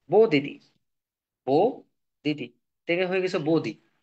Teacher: তাহলে দেখো এখানে দুইটা কিন্তু সেম ছিল, দুইটা সেম ছিল, দুইটা সেম ব্যঞ্জন ধ্বনির মধ্যে হঠাৎ করে একটা লোপ পাইছে, বাদ গেছে, হারিয়ে গেছে, আর আর একটা রয়ে গেছে। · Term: ব্যঞ্জন চ্যুতি